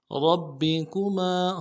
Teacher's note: را کو موٹا کرنا ہے، با کے ساتھ ملانا ہے، با کے اوپر تشدید زور دیں گے ، کاف کو نرم سے ادا کریں گے، میم کے ساتھ